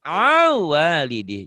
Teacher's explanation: Jadi dileburkan, dimasukkan ya. Jadi bunyi n-nya hilang. Hilang ditelan waw. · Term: idgham